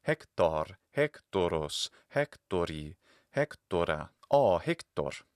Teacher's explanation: That O sound is fundamentally short in the root of the word. It's only lengthened in the nominative.